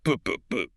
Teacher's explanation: It's just a tiny explosion of air at the lips. The throat is asleep.